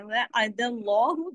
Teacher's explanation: وعد اللہ، دال پہ زبر ہے، اللہ کے نام میں لام جلالہ ہوگا، اس کو لام کو ہیوی کر کے پڑھیں گے · عین زبر عین کو الف کی طرح نہیں پڑھنا ہے